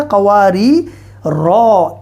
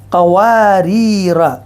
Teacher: وقف کریں گے چونکہ آیت آ رہی ہے تو پھر اس الف کو پڑھا جائے گا، یہ الف مدہ